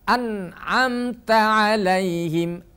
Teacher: annya dibaca jelas karena Nun bertemu dengan Ain hukum bacaannya adalah izhar halqi